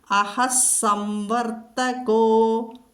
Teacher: കോ എന്ന് പറയണം, ഗോ എന്ന് പറയരുത്, ഗാ മൃദുവാകരുത്.